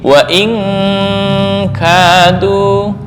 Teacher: Wa in kadu, ya, tapi kalau dibaca ikhfa lebih besar daripada dengung bunyinya, jadi wa malah kurang pas. Maka untuk kaf dan qaf dengung lebih besar